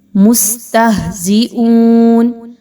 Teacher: اب سین میں سیٹی کی آواز کو لانا ہے آپ نے، اور تہ میں ہا کے مخرج کو بہت بھاری اور موٹے انداز میں ادا کرنا ہے